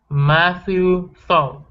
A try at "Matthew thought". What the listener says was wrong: Okay, end with the T.